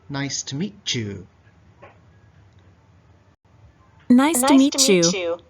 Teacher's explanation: often a T and a Y sound become like a chew.